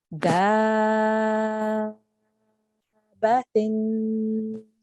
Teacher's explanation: rather than elongating the dal for just 2 seconds, we need to elongate for about 5 to 6 seconds before we join it to the ba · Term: mad al-kabir